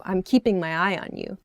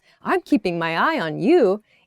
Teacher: So I'm keeping my eye on you with that downward intonation sounds suspicious.